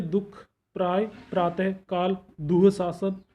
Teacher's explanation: अगला है विसर्ग, इसका उच्चारण कंठ से होता है